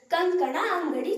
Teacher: ಈ ಪದಗಳಲ್ಲಿ ಅನುಸ್ವರದ ಮುಂದಿರುವ ಅಕ್ಷರ ಕವರ್ಗಕ್ಕೆ ಸೇರಿದ್ದರಿಂದ ಕವರ್ಗದ ಅನುನಾಸಿಕ ರೀತಿ ಧ್ವನಿಸುತ್ತದೆ